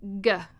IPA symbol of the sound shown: g